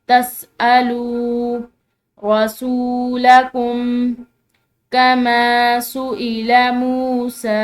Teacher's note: लाम के बाद वाव साकिन है तो लाम को लंबा